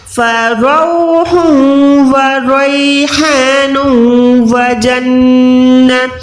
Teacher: نون دو پیش کو واو کے ساتھ ملا کے یہاں پر بھی ہم نے کیا کرنا ہے ادغام کرنا ہے گنے والا